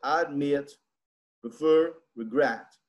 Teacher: a acentuação tônica, né, vem na última sílaba